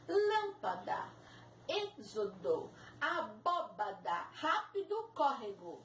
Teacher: Tem que ser a antepenúltima sílaba mais forte. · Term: proparoxítonas